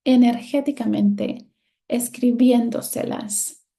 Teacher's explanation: The stressed syllable is the fourth to the last one, counting from the end of the world. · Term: sobreestrújulas